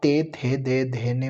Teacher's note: दंत्य व्यंजन आप ते थे दे धे ने बोल के देख लो, ये सारे के सारे आपके दांत के टच होंगे